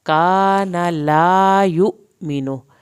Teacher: یو پہ جھٹکا لگے گا، حمزہ کے اوپر جزم آ گئی ہے